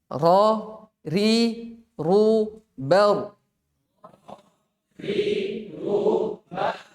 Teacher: Berulang. Jadi kayak bergetar begitu. Ya, getarannya ketika diucapkan jangan terlalu banyak.